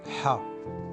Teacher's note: C'est un H très fort, prononcé du fond de la gorge, comme si vous souffliez sur vos lunettes pour les nettoyer. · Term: le son ha